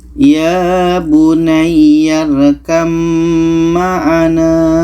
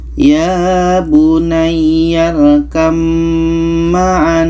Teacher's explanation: Ba ini kita tidak baca lagi karena terus masuk ke mim